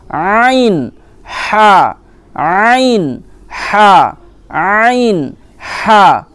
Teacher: এটা আপনার গলার মধ্যখান থেকে বের করবেন। ঠিক আছে, মধ্যখান থেকে একটু চেপে বের করবেন · কণ্ঠনালীর মাঝখান হতে উচ্চারিত হয় আইন হা, আইন হা। এটা আপনার গলার মধ্যখান থেকে বের করবেন।